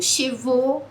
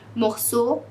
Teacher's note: Você fala como O, um O com acento circunflexo fechado mesmo.